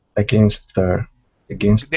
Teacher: So from that s right into the th.